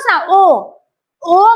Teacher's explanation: ओ म्हणताना कंठ प्लस ओठाचा आकार करावा लागतो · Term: कंठ प्लस ओष